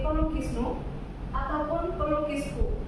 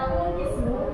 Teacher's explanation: Bunyi M adalah nasal bilabial yang memerlukan penutupan sempurna bibir.